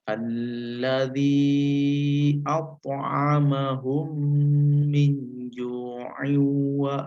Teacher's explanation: membacanya mendengung kemudian eh dua bibir itu menempel lalu ditahan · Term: idgham mimi